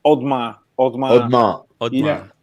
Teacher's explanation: You just cancel the E, because otherwise it sounds like you're making too much effort.